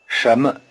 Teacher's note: 什么 The initial consonant in 什么 is the same as the initial consonant in shay. The tip of the tongue is curled back in the retroflex position. In normal speech, the tone pattern of 什么 sounds rather like a rising tone over both syllables.